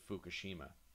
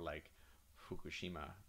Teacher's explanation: in Japanese, it's kind of half F and half H. So that would come out more like Fukushima with like a exhaling breath kind of H sound kind of blended in there.